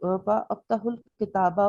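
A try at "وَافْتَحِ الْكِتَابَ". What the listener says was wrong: वा अफ्ताहू नहीं पढ़ेंगे, वफ्ताहू। असल में क्या था ये? असल में क्या था वो से पहले?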